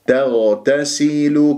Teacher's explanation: التاء قبل الغين وبعد الغين مرققة، والغين مفخمة، مرتبة رابعة، مرتبة الساكن. · الغين الساكن تحتاج إلى دربة لأنه يجري فيها الصوت ولا يجري فيها النفس، فلا تجعلها خاء